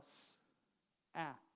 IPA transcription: s, æ, t